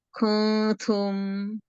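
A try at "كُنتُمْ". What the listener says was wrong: Nah, jangan kung kita tidak pakai ng, jangan kung. Coba pelan-pelan kasih tempo. Kun. Ujung lidahnya ini Om. Ujung lidahnya itu digantung menuju huruf ta, menuju makhraj ta. Kun, gitu ya.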